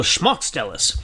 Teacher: it's more of an sh at the beginning and it's more emphasis on the first syllable